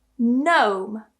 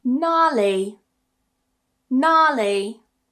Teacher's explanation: When you get the G and N at the beginning of a word, it also disappears.